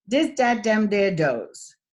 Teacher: you probably have been substituting the TH sound with the D sound